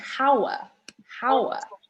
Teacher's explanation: We're not saying hour, hour. We say hour, pronounced like ow. So it sounds like ow. We don't pronounce the H. So it's as if it didn't have an H.